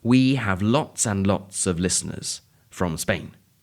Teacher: the word lots flows directly onto and and the d of the and isn't pronounced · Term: connected speech